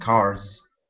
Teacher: I would pronounce cars with more of a buzzing sound, more of a Z sound. Okay, cars with a Z sound, cars.